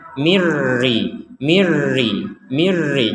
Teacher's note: maka kita memasukkan huruf nun ini kepada huruf ro sehingga menjadi mirri